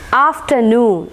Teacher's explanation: So here both the syllables are stressed. After as well as noon is stressed